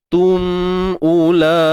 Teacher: Mim mati bertemu hamzah, izhar syafawi. Izhar syafawi, jelaskan sebutan mim tu. Tum ula, u satu harakat saja.